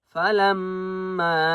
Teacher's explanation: میم کے اوپر تشدید غنہ کریں گے ، فلما، چھوٹی مد ہے میم کو 3 الف کی مقدار